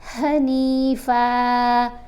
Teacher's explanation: یہ والی جو ہا ہے نا یہ چیسٹ سے ادا ہوگی